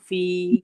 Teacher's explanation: فا میں یا مدہ ہو رہا ہے, تو اس کو ہم تھوڑا سا کھینچیں گے, فی نہیں بولیں گے.